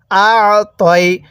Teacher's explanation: যদি আইনটা পড়ার সময় গলার মধ্যে হালকা চাপ দিয়ে পড়ি তাহলে আইনটা সহি শুদ্ধ উচ্চারণ হবে